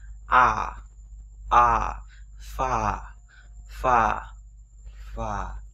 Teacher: Rồi chúng sẽ có như thế này. Âm a dài, âm a dài nó không phải là âm á mà nó là âm a rõ ràng và dài ra